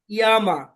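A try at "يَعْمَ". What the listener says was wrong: হ্যাঁ, ইয়ামা ভাই, আইনের উচ্চারণ তো করতে হবে, আইনের উচ্চারণ করতে হবে। ইয়া, ইয়া, একটু শক্তি দিয়ে, ইয়া আইন জবর সবাই সবাই বলেন তো, ইয়া আইন জবর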